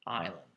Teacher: Just the stress in the pronunciation is on the first syllable